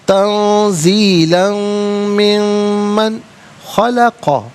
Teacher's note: نون ساکن اس کے بعد خا حرف حلقی ہے تو نون ساکن کو اظہار کے ساتھ بغیر غنّے کے پڑھیں گے · من میں نون ساکن ہے تو میم کو یہاں پر من کی میم کے ساتھ ملا کر میم کی آواز کو غنّے کے ساتھ ادا کیا جائے گا. دونوں مقامات پر یرملون کا قاعدہ اپلائی ہوگا.